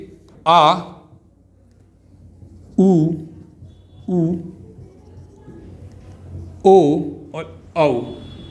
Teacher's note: ये हैं आपके 5 पश्च स्वर। इनको बोलते समय जीभ का पीछे वाला हिस्सा प्रयोग में लाया जाता है